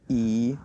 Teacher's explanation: So second tone and the fourth tone together.